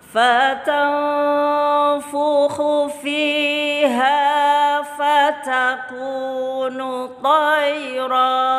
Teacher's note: Membacanya siap-siap dengung, panjang tambah satu ketuk. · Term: ikhfa